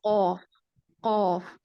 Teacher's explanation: कौफ में आप देखें कि बिल्कुल कौफ में आपका जो हमने पढ़ा था कि हरूफ लिहातिया होते हैं और लिहात के साथ ये टच करते हैं, यानी जो जुबान की जड़ है, पिछला हिस्सा है, ये ऊपर कव्वे की तरफ टच होता है